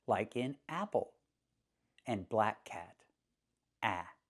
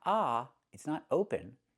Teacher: To make this sound, put the tongue down in the front behind your teeth and up in the back so it's slanted. A, and smile a little bit. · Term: short vowel